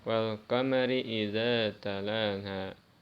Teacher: Membacanya idhar, membacanya jelas. Alif lamnya dibaca jelas, tidak diidghamkan. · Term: alif lam qamariyah